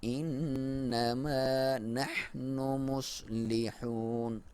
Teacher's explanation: نون مشدد ہو تو اس پہ آپ نے غنہ کرنا ہے اور ایک الف کے برابر لمبائی